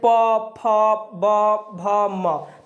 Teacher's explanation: तो प फ ब भ म बोलते हैं ना, तो ये हमारे ओठों पर जाता है। ठीक है, कहाँ पर आता है, किस पर प्रभाव पड़ता है, अगर ओठ के बिना हम प बोल नहीं सकते। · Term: ओष्ठ